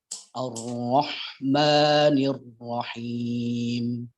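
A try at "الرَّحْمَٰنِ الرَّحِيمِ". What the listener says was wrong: Jangan dipantulkan. Ar-Rahmanir-Rahim. Jadi masuknya tuh halus. Nirro.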